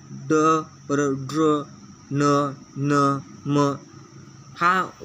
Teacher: 2 अनुनासिक किंवा परस्वर्ण ड, ड्र, न, न, म या वर्णांचा उच्चार त्या वर्णांच्या उच्चारस्थानाबरोबरच नासिकेतून म्हणजे नाकातून होतो, म्हणून त्यांना अनुनासिक वर्ण असे म्हणतात.